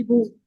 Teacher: पेश को पढ़ने के लिए बू आपके बू पूरे होठों को गोल होना होगा। अगर आप होठ नहीं गोल करेंगे तो आवाज बो आएगी